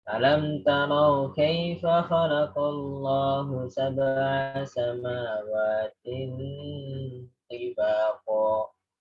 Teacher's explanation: Ini ikhfa ya, tanwin dengan to ditahan, gunah juga.